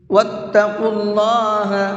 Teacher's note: اللہ کے نام کو یہاں پر بھی منہ بھر کے پڑھیں گے، اس لیے کہ یہاں پر اللہ کے نام سے پہلے پیش ہے